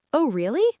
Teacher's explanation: If you say it with a flat voice, dropping your pitch at the end, it sounds like you are bored or even sarcastic.